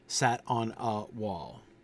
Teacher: Stressed, unstressed, stressed, unstressed. And then sat on a wall. Stressed, unstressed, unstressed, stressed.